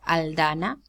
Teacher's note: as an occlusive because it's preceded by the lateral.